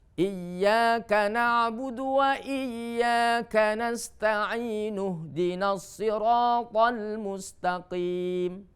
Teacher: kalau ihdina ini diposisikan di tengah kalimat, maka hamzahnya harus tidak dilafalkan atau dibuang hamzahnya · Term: hamzah wasol